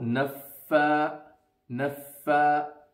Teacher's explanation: the fa will be pronounced when the edges of the bottom teeth, the front bottom teeth, will touch the inside of the bottom lip